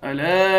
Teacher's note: لام کے بعد الف ہے، ایک الف کے مقدار کھینچیں گے